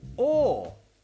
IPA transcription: ɔ: